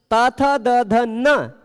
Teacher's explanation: त थ द ध न इन सबके उच्चारण में दांत टच हो रहा है।